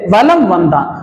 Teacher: ம்முக்கு வந்து அரை மாத்திரை ஆனா அதுக்கு அப்புறம் வா வந்திருக்கு அதனால இதனுடைய மாத்திரை அளவை எப்படி போட்டுக்கணும் அப்படின்னா கால் மாத்திரை அளவா போட்டுக்கணும் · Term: மகர குறுக்கம்